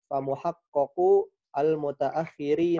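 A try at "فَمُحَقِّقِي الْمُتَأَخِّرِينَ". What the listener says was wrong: Fa muhaqqiqu itu kasrah bukan fathah.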